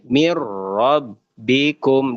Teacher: dia hanya dimasukkan aja tanpa didengungkan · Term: idgham bila gunah